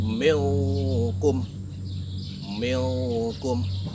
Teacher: Nah, di situ ada nun mati bertemu dengan huruf K. Jadi N yang terdapat pada huruf nun mati tadi disamarkan menjadi huruf NG atau eng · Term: ikhfa hakiki